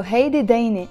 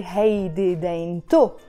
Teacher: that te marbuta is mute. We don't pronounce it, it's silent. You see, I'm not saying heidi dainit, I'm saying heidi daini.